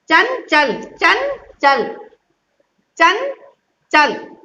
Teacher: ये आपका तालु वर्ण है, चा जो है वो तालव्य वर्ण है, तो इसलिए जब आप इस चा को बोलोगे तो आपको अपनी जीभ जो है वो तालु में लगाते हुए बोलोगे, तब इसकी साउंड निकलेगी।